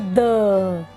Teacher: द तो हमारे दोनों दांतों के बीच में जीभ आ गई और हमने बोला द।